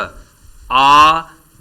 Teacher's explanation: तो प्रश्न संख्या 43 में ख, आ विवृत स्वर है, क्योंकि आ के उच्चारण में मुंह ज़्यादा खुला होता है